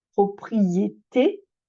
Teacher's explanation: le E on le laisse fermer parce que le t on le prononce avec la syllabe suivante